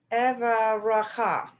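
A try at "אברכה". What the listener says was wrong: Right, except the first shva is silent. So can you try it again without sounding the shva under the vet?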